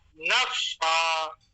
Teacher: کیونکہ فے پہ تشدید لگی تو فے دو بار پڑھا جائے گا. ایک بار نون کے ساتھ ملا کے پڑھنا ہے, ایک بار فے کو خود اپنے آپ میں وہ پڑھا جائے گا.